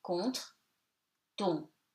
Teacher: ON before a consonant or at the end of the word, no secret, becomes nasal, you eat the N, so it becomes contre, ton.